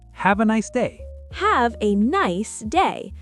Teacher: Stress nice and day. Your voice should be cheerful.